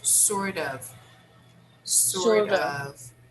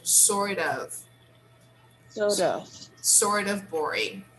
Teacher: this f here we pronounce with a sound of v the sound is a v